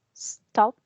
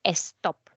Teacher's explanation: we tend to put an e sound at the beginning of the word